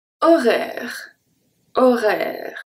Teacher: the O here is going to be a hard O, a close O, because there's the R after that come and close the sound.